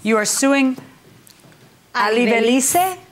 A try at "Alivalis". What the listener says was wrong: Alivalis, the E is silent at the end.